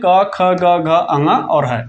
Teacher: तो आप उसे भी टिक करके आएंगे कि ये ह जो है कंठ व्यंजन होता है।